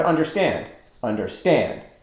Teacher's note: We don't say understand, we say understand, with the accent on the final syllable. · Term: Anapestic